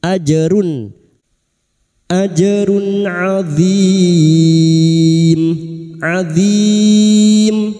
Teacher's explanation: ini dibaca jelas tanpa mendengung ajrun ajrun adzim adzim Bertemunya mad dengan huruf yang dibaca wakaf mad arid sukun empat harakat kita panjangkan. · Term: idhar halq